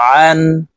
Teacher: আইন হরফ হলকের মধ্যখান থেকে চাপ দিয়ে উচ্চারণ করব, কারণ আইনের মখরজ হলকের মধ্যখান থেকে হবে।